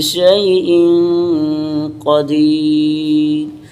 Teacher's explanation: शैइन क़ादी यहाँ पे गुना करेंगे, क़ाफ को ऊपर पढ़ेंगे, यहाँ एक अलिफ के बराबर मद करेंगे और रा को आखिर में साकिन करके बरीक पढ़ेंगे